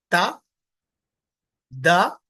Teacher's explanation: जबान की नोक ऊपर के दांत की जड़ में लगाएंगे